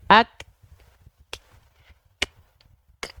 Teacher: ketika huruf Kaf dalam kondisi sukun sukun sukun Tuh kan tidak mengeluarkan bunyi vokal makanya kedengaran banget percikan nafasnya ak pasti terlebih terdengar Kenapa Karena setelah percikan nafasnya itu enggak